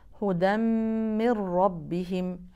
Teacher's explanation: ويبقى الجزء الخيشومي وهو الغنه حركتينقطع اللي بعدها من ربهم نون ساكنه بعدها حرف الراء تدغم النون الساكنه في الراء تدغم ادغام بغنه ام بلا غنه بلا غنه اذا ذهبت النون